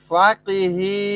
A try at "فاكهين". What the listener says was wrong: ভাই ফাকি এর কফ, এটা কাফ হালকা। ফাকি ফাকিহিন, ঠিক আছে, হালকা।